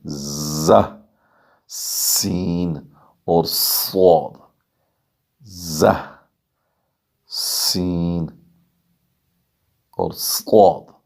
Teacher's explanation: یہ صاد حروف مستعلیہ میں سے ہے، ہر صورت میں ہم اسے پر کر کے پڑھیں گے، چاہے اس کے نیچے یا اس کے اوپر کوئی بھی حرکت ہو، لیکن زہ اور سین اور صاد یہ سیٹی کی آواز سے پڑھیں گے۔ ان تینوں کا ایک ہی وائس سے ایک ہی تجوید کا رول استعمال ہوا ہے۔